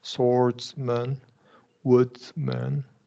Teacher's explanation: And in all of these man words, you're probably going to do a schwa.